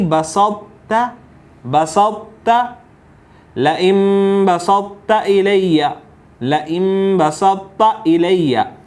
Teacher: تو ان چاروں حروف کو پڑھنے کا جو طریقہ ہے وہ یہ ہے کہ پہلے تا کو موٹا اور پھر تا کو آپ نے باریک پڑھنا ہے. اس کو ادغام ناقص یا ادغام ناتمام کہتے ہیں.